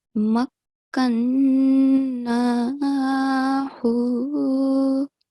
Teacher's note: So that should also be prolonged for 2 seconds. And the noon mushaddad, it should be prolonged for 2 seconds with nasal sound